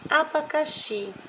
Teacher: Sílaba tônica xi, sílaba átonas abacá. Classificação da palavra oxítono.